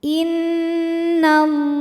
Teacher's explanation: Lam pada lafaz Allah atau lam jalalah dibunyikan secara tafkhim sebab huruf sebelumnya berbaris fathah, maka dibacanya tebal.